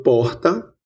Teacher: temos a pronúncia de uma fricativa aspirada R